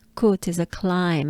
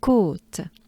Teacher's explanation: There's a tiny bit of sustain on the O, but it's very subtle.